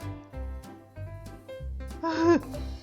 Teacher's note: який це звук приголосний твердий дзвінкий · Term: звук г